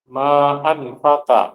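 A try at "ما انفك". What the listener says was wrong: itu salah ya? Manfakka. Salah harokatnya, fatal banget ini salahnya. Hamzahnya di sini wasol, jangan diharokatin. Terus kafnya dia apa? Di tasdid. Manfakka. Ini terlalu fatal sih ini salahnya ini. Kok bisa salah di situ ya?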